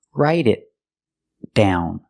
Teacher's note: Write it. And the T in it is a stop T because it's before a consonant. So stop the air. · So stop the air. Make the T position and stop the air.